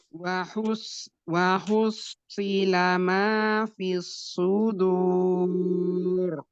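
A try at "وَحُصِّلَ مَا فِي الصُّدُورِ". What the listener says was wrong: Nah, waktu wahus itu hanya tipis dulu baru sodnya tebal. Wahusi. Jadi hanya nggak boleh wahusi. Jadi hanya nggak boleh terbawa tebal.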